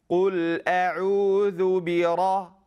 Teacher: people bring their lips forward, and then the ra sounds like it's half a fatha, half a dhamma. It has half a fatha, half a dhamma, and that is incorrect.